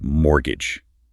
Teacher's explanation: For fluency, it's mortgage with a silent t.